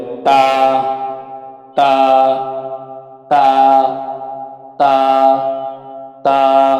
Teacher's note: জিহ্বার আগা সামনের উপরে 2 দাঁতের গোড়ার সাথে লাগিয়ে 1 আলিফ টেনে পড়তে হবে